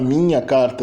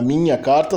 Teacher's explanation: o NH nada mais é do que uma aproximante palatal nasalizada